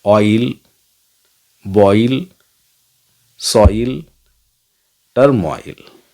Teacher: इनमें हम ऑई sound का प्रयोग, अ और ई का कॉम्बिनेशन है।